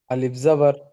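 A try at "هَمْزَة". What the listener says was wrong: যখন আলিফের উপরে জাবার জের পেশ থাকবে তখন সেটাকে আলিফ বলবো না, তখন সেটাকে কি বলবো, হামজা বলবো, হামজা। আর আলিফ হবে না। হামজা জাবার আ, হামজা জাবার আ।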